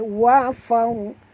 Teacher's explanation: Ra sini bila dia mati huruf sebelumnya baris atas kena baca tebal.